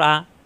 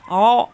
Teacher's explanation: আ কণ্ঠনালীর শুরু থেকে আইন কণ্ঠনালীর মাঝখানে চাপ দিয়ে